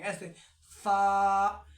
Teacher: جب ہم فا بولیں گے تو اوپر کے دانتوں کو نیچے کے ہونٹ میں لگائیں گے